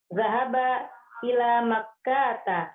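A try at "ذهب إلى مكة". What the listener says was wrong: Yes, hati-hati, kayaknya nggak panjang. Makkata.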